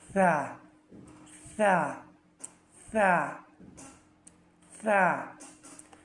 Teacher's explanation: সামনের উপরের 2 দাঁতের পেট ও আগার সাথে সা উচ্চারণ হয়